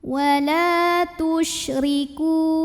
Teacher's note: Huruf shin punya sifat yang tidak dimiliki huruf lain, namanya tafashi. Tafashi itu artinya menyebarkan angin di dalam mulut.